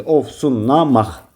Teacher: Bir aaz fərqli düşdü. Q da ki, x-ya çevrildi.